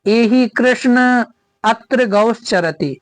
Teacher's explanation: अंतिम वर्ण को तीन मात्रा का समय लगाकर बोलते हैं उसे ही प्लुत स्वर कहते हैं